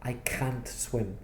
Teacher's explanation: I stressed the word and I said I can't swim so because there was stress on can't you knew ah it must be negative because he stressed it